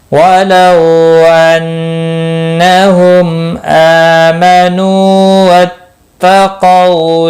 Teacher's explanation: وَلَوْ واولین ہے، تھوڑا نرمی کے ساتھ کھینچ کر ادا کریں گے۔ نون مشدد پر غنہ ہوگا · میم ساکن کے بعد حمزہ آیا ہے، یہاں پر اظہار شفوی ہوگا۔ حمزہ کے اوپر کھڑی زبر ہے، ایک الف کے برابر کھینچ کر پڑھیں گے۔